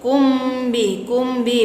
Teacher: Kumbi bacaan ikhfa safawi sebab mim sukun bertemu dengan ba, maka hukum bacaannya ikhfa safawi. Ikhfa safawi artinya samar-samar di bibir dan didengungkan. Hurufnya ada satu, yaitu ba.